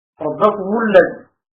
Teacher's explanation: ميم ربكم موصولة بالضم للجميع لأنها قبل ساكن وبلا واو، ربكم الذي.